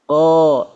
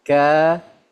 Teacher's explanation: ketika menyebutkan huruf ko ya, lidahnya menegang. Kalau kaf lidahnya rileks.